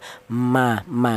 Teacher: keluarnya huruf berasal dari kedua bibir baik bibir atas bibir bawah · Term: huruf mim